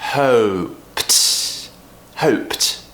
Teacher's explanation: P, unvoiced, so that means we have to create that T when it's an ED ending.